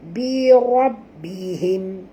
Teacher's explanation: ra sini kena baca tebal, jangan baca birab, baca bi ra, ya.